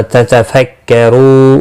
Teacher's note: رو و مدہ ہے، ایک الف کے برابر کھینچ کر پڑھیں گے، اور وقف کی صورت میں نون ساکن پڑھا جائے گا، وقف بالاسکان ہوگا، مد العارض وقفی ہوگا، 3 سے 5 الف کے برابر کھینچ کر اور وقف کریں گے۔